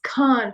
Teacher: Khan from the epiglottis you know it's like KH